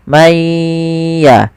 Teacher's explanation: man ketemu ya, maka maya sambil ditahan suara gunnahnya. Maya. Sedangkan ikhfa adalah membaca suara nun di antara keduanya, di antara izhar dan idgham.